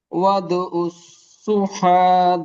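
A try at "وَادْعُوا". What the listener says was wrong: ওয়াদু উ, টান দিতে হবে। আইন ও পেশ উ।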